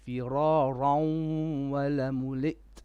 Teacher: Do you know idgham with ghunna? So فرارا, two beats with ghunna because there's a wow after the tanween